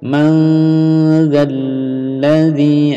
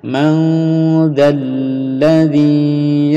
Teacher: Bunyi 'n' disamarkan menjadi 'dz' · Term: ikhfa